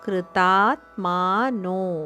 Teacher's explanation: ಕೃತಾತ್ಮಾನೋ ಮೂರು ದೀರ್ಘ ಅಕ್ಷರಗಳು